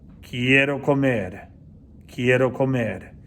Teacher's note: comer should be pronounced more strongly, more stressed than I want